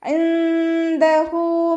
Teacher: നൂൻ സാക്കിനയ്ക്ക് ശേഷം ഇഖ്ഫാൻ്റെ അക്ഷരമായിട്ടുള്ള ദാല് വന്നു, അപ്പം നമ്മൾ നൂൻ സാക്കിനയെ മറച്ചു വെച്ചിട്ട് മണിച്ചോതി കൊടുക്കുക.